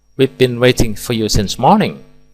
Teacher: We've been waiting for you since morning dilafalkan dengan nada normal, selanjutnya menurun dengan tujuan hanya sekedar memberitahu dan seterusnya.